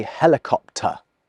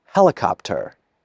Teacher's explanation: speakers of so-called General American English, just as an example, do pronounce the R.